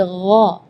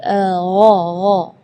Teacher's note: kalau huruf ghain itu dari bagian tenggorokan ya